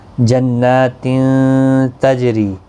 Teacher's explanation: اور یہاں پر تنوین کے بعد حروف اخفا کا تا اخفا حقیقی ہوگا۔ جنات تجری، ری یا مدہ ہے، ایک الف کی مقدار کے برابر کھینچیں گے، اور جیم ساکن پر قلقلہ بھی ہوگا۔